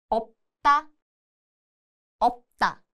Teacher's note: When used as a침 at the end, the show sound disappears and it just sounds like a light unreleased. This sound is made by gently closing the lips without fully releasing the air